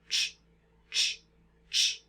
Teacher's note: So this is the t and sh sound at the same time, and we get ch.